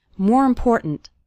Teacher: the word more kind of runs into the word important and the last syllable of important kind of gets reduced we